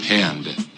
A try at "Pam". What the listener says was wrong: There's no D. It's Pam. P. M. M. No, there's just one M.